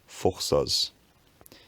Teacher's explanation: at some point the bilabial fricative becomes f